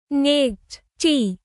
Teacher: A sharp, short burst of air.